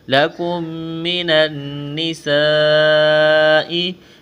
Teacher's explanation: نون مشدد پر غنہ کریں گے، آواز ناک میں چھپائیں گے، نون کو نون کے ساتھ ملانا ہے.